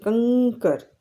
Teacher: આ જે અનુસ્વર છે એનો ઉચ્ચાર ઊંગ કરીએ છીએ